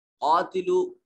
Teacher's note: क़ाफ को मोटा पढ़ेंगे, हरूफ मुस्तालिया में से है और अलिफ मद्दा है, इसको लंबा करेंगे